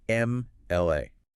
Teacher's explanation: The very first sound exiting your lips is A, which is a pure vowel sound. Consequently, it requires the article an.